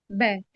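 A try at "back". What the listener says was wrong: برافو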